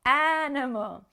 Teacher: in english we don't say animal with the stress on the last syllable we put the stress on the first syllable